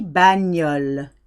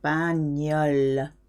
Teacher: GN gives you a ñ sound, very nasal.